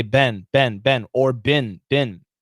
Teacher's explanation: a lot of students want to say bean but no american says bean we say ben